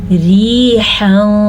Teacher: را میں نے باریک پڑھی کیونکہ اس را کے نیچے زیر ہے